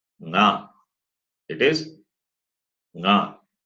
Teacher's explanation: When you say nga, it involves nose. That is why it is nasal. So throat plus nose. Therefore it is guttural plus nasal. · the place of articulation of the last letter is both the throat and the nose.